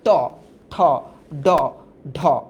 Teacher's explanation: তোমার জিহ্বাটা উল্টায় যায়, উল্টায় যায় উপরে বাড়ি খায়। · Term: মূর্ধন্য